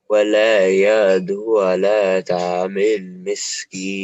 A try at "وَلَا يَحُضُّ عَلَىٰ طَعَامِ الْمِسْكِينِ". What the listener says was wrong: ولا يحض. We pronounce it ضاد. ولا يحض على طعام المسكين.